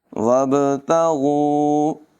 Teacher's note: با ساکن میں قلقلہ ہوگا · غین کو پر پڑھیں گے، غین حلق کے اوپر والے حصے سے ادا ہوگا، اس کو گاف کی طرح نہیں پڑھیں گے ، وَابْتَغُوا نہیں پڑھیں گے بلکہ اس کی آواز سافٹ ہوگی،